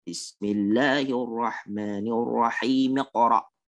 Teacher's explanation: Kemudian dan mim yang ada pada kata ar-rahim menggugurkan hamzah wasal yang ada pada iqra